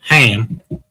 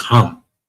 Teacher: In English, you pronounce it like a higher pitch A, as in ham. But in Hebrew, it's more like hum.